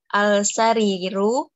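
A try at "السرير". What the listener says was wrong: As-sariru. As-sariru syamsiyah, jadi langsung ke huruf sin. As-sariru ini tetap dhammah akhirannya. Karena tidak ada faktor yang mempengaruhi sebelumnya.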